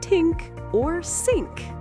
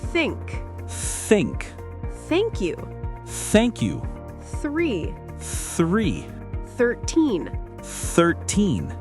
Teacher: Your tongue touches your top teeth a little bit, then you blow air out.